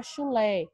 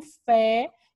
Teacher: a vogal tônica ela possui um timbre aberto